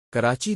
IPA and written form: kəˈraːtʃi (Karachi)